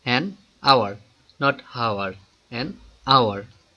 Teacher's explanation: the initial consonant H is not pronounced. Ha is not pronounced. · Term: silent H